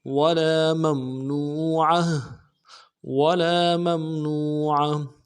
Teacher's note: ولا میں لام کے ساتھ الف مدہ ایک الف دال میں کھینچیں گے، میم کو میم کے ساتھ ملانا ہے، میم ساکن غنہ کریں گے، نون کو واو کے ساتھ ملانا ہے، واو مدہ ایک الف دال میں کھینچیں گے.